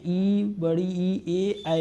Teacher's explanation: अगर जीभ के आधार पर अगर हम उच्चारण करना चाहे तो अग्र स्वर में क्या होते हैं ई बड़ी ई ए ऐ